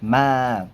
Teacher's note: Nada pertama adalah suara tinggi, datar, dan panjang. Nada pertama ini memiliki penanda kayak strip dia.